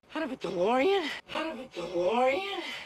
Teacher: when we have the T sound between two vowel sounds, the T becomes a soft D